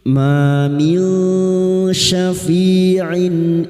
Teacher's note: nun sukun bertemu shin ikhfa hakiki, samarkan bunyi nun sukun dan mendengung selama 3 harakat